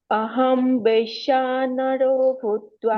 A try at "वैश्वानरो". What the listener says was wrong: देखो तुमको व बोलना पड़ेगा, हाँ, वैश्या नहीं है वो, वैश्वा।